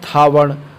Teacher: ये महाप्राण भी है और ये अघोष भी है।